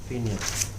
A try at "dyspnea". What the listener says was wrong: Pineal alla madhu. No, PNEA. It is not PENA. It's Nia. Nia. dyspnea. DYSPNEA.